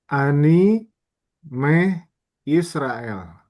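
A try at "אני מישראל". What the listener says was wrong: Oh, ini bukan huruf guttural. Yud bukan huruf guttural.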